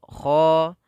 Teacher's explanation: Kha itu sama dengan ghain, ya, maka yukha, kha agak sedikit tebalkan, karena huruf kha termasuk huruf isti'la yang mana pangkal lidah kita harus kita angkat supaya tebalnya dapat, tapi tidak terlalu tebal sebagaimana huruf ta gitu, ya.